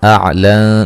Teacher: نون ساکن کا باریک اخفا ہے